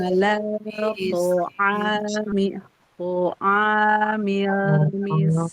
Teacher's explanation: jadi harus hati-hati memanjangkan bacaan pada ain ya, jangan naik ke hidung